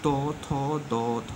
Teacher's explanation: ত, থ, দ, থ, দন্তান্ন। দেখো এগুলো বলার সময় জীব কিন্তু দাঁতে লাগছে, তাই এরা দন্তবর্ণ।